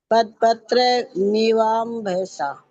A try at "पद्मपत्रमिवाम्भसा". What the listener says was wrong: ये पद पत्र नहीं है, पद्म। ये मैं है इसमें जुड़ा हुआ। पद्म पत्र मिवाम्भसा। पद्म पत्र मिवाम्भसा।